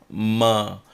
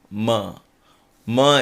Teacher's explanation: there is also a nasal sound for this and that is the simplest of all ma where we use lips